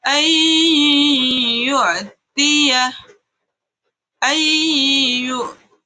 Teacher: Contoh ketiga adalah nun sukun bertemu ya. Nun sukunnya langsung masuk ke ya, sehingga nun sukunnya itu dianggap tidak ada. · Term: idgham bi gunnah